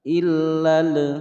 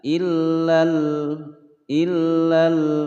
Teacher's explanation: Illal, karena di sini adalah al-qamariyah, lamnya dibaca jelas, tidak boleh ditawaludkan atau dipantulkan